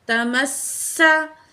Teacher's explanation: سین میں سیٹی والی آواز دیں گے۔ تمسا، نون کو ہم نے نون تشدید کے ساتھ ملا کے پڑھنا ہے، درمیان میں الف لام اور یہ لام، الف اور یہ لام تینوں نہیں پڑھے جائیں گے، ٹھیک ہے۔